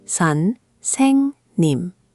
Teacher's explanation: The saeng part should flow more. It's almost like saying song, but with an eh sound. · The middle syllable gets the most weight.